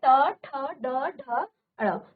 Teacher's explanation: ये आपकी मूर्धा को स्पर्श करती है इसके लिए इसको मूर्धन्य इसको मूर्धन्य कहा जाता है